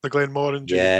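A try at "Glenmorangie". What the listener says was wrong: it's orangey like orange not morangi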